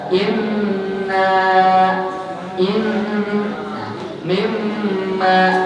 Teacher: kalau ada nun bertasydid, mim bertasydid, itu ada suaranya di hidung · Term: Gunnah